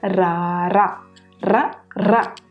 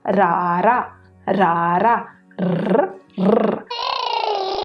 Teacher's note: ਹਰ ਵਾਰੀ ਨਿੱਕੀ ਜਿਹੀ ਸਾਡੀ ਜ਼ੁਬਾਨ ਘੁੰਮੇਗੀ ਤੇ ਥੋੜੀ ਜਿਹੀ ਹਵਾ ਜੀ ਵੀ ਸਾਨੂੰ ਮਹਿਸੂਸ ਹੋਵੇਗੀ